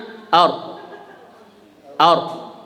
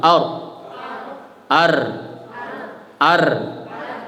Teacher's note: dalam bahasa Arab ro itu takrirnya disamarkan